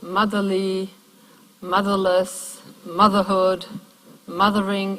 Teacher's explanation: the stress always stays on that base word